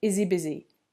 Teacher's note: H sounds tend to disappear on pronouns in English